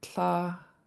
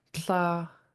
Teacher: TL, high tone AA.